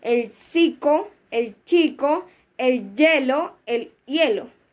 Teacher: Este dice que este alófono es totalmente distinto de la consonante lateral palatal y dice que se articula apoyado apoyando la zona anterior apicopredorsal de la lengua en la alveolo prepalatal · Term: lateral linguopalatizado